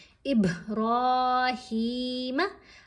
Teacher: हा को खींच कर पढ़ा लंबा पढ़ा क्योंकि खड़ा जेर है रा को भी लंबा पढ़ना है और मोटा पढ़ना है हा